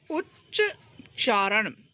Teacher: जैसे उत प्लस चारण तो उच्च चारण ता के बाद च आया तो ता भी च में बदल गया